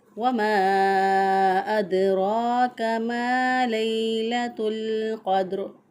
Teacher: दाल साकिन है, तो इसको हिलाकर पढ़ेंगे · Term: कलकला